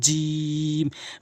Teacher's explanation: জিহ্বার মাঝখানের অংশটা উপরের তালুর সঙ্গে লাগাবেন